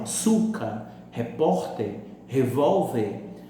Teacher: A sílaba mais forte é a penúltima. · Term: paroxítonas